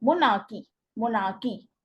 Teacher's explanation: divided in three syllables in which the stress on the first syllable.